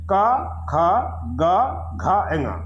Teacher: क वर्ग में क, ख, ग, घ, ङ, ये 5 वर्ण हैं और इनका उच्चारण स्थान है कंठ।